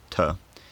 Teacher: realised as a voiceless alveolar plosive most of the time